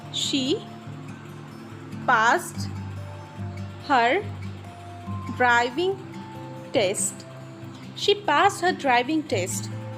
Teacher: So here she passed. Pass is here as disbelief. So it is a high rising tone.